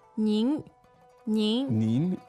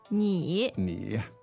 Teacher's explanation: It's the second tone. Exactly. As opposed to the third tone, less formal, which is 你 ni.